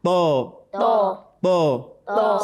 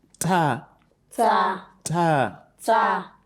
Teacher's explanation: The back of the tongue rises up when you pronounce tho, whereas that of ta, it doesn't do so. The tip of your tongue touches the root of your upper teeth. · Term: heavy letter